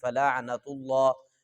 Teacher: یہ لفظ اللہ موٹا کریں گے کیونکہ پیچھے والے لفظ پر پیش ہے، جب پیچھے والے لفظ پر پیش یا زبر ہو تو پھر لفظ اللہ موٹا کرتے ہیں۔